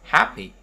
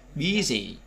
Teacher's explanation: Happy âm tiết thứ nhất, busy âm tiết thứ nhất.